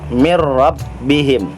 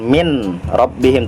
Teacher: dimasukkan ke dalam huruf ro ya tetapi juga tidak mendengung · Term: idgham bilagunnah